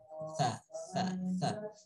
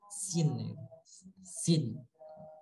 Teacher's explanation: Huruf sa adalah huruf yang dikeluarkan antara ujung lidah, tarful lisan, dengan bertemu dengan ujung gigi seri atas.